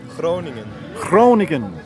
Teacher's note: See, the good old guttural G's up north and down in the middle, but not down south.